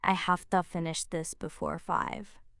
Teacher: There's hafta, with that little breathy F.